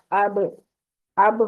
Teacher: ہونٹوں کو ملانے سے یہ با ادا ہوتا ہے، لیکن یہاں پر ایک اور رول ہے فلفلے والا کہ با کو ہم نے چھوڑنا بھی ہوتا ہے، اس لیے اب کریں گے.